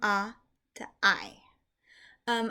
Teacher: if you start with the sound ah and you add the y sound for the yud, you end up with an I, and so this makes an I sound. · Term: diphthong